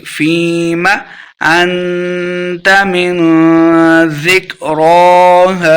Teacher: فِيمَ یا مد ہے، اس کو 2 حرکات لمبا کر کے پڑھیں گے۔ فِيمَ أَنْتَ مِنْ ذِكْرَاهَا، انت اخفاء کا قاعدہ ہے، گنہ کریں گے۔ · انت اخفاء کا قاعدہ ہے، گنہ کریں گے۔ انت من، اخفاء کا قاعدہ یعنی گنہ کر کے پڑھیں گے، من نہیں پڑھیں گے۔